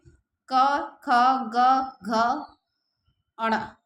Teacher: तो क क्या है? अल्पप्राण। ख महाप्राण। ग अल्पप्राण, घ महाप्राण और ण अल्पप्राण।